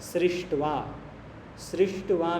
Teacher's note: सृष्ट्वा में शकार मूर्धन्य है, सृज धातु है, धातु से सृष होगा, शकार से शकार मूर्धन्य आदेश आएगा।